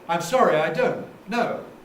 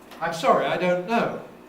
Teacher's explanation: the first one has a boundary an intonation break after don't before no the second one doesn't